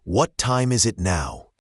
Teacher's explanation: the s sound carries over to the it. Try to link those sounds.